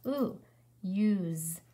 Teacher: so our S sounds like a Z. And our E is silent.